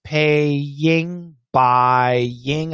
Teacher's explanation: So when we have paying, it's an A sound and then an ing sound. We got to have that Y. Got to be there to connect.